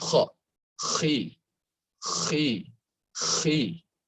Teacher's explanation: isti'alah ini saking tebalnya, dia kasroh pun juga dibilang tebal